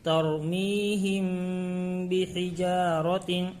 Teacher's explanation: میم ساکن کے بعد با آیا ہے اس لیے ملا کر گنہ کے ساتھ پڑھیں گے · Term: اخفاء شفوی